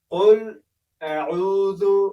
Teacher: قل أعوذ برب الفلق سورة دا هم په قل أعوذ شروع شوی دی چې په اعوذ کې به د حمزه او د عین ترمنځ تفسیر کېږي او قاف به ډکه ادا کېږي ځکه سوني او د ژبې په بیخ کې ادا کېږي ځکه د ډکو تورو له ادا کېدونکو له تورو څخه دی.